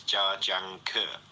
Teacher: Also, it's Chinese words are very syllabic, so you don't it's not like Janker or Janker, it's every syllable has kind of equal weight